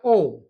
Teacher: केवल ओ इसका उच्चारण होता है कंठ और ओष्ठ से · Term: कंठोस्थम